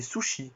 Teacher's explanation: la consonne S court, devant la voyelle I, elle se prononcera ch.